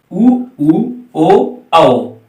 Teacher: पूरे स्वरों में से चार स्वर वृत्ताकार या वर्तुलाकार कह लीजिए, जिनका उच्चारण करते समय हमारे ओष्ठ की आकृति गोलाकार यानी वृत्त के आकार की हो जाती है